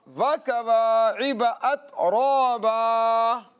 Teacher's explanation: را کی آواز کو موٹا کر کے پڑھیں گے